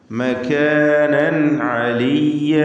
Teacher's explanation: വറഫഅനാഹു മകാനൻ അലിയ്യ, മകാനൻ, നൻ തൻവീനിൻ്റെ നൂനിൻ്റെ തൻവീനിനെ ഇൽഹാർ ഹൽക്കി നൽകി മണിക്കാതെ വെളിവാക്കുക